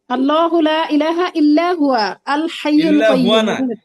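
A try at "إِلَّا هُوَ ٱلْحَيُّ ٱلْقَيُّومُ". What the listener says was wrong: না, ইল্লা হুয়াল হাইয়ুল কাইয়ুম। মিলিয়া পড়েন, হুয়াতে যদি ওয়াকফ করেন ইল্লা হু হবে তখন। আল হাইয়ুল কাইয়ুম আলাদা পড়বেন। কিন্তু একত্রে বললে হুয়াল হাইয়ুল কাইয়ুম হবে।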